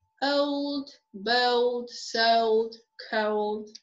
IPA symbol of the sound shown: əʊ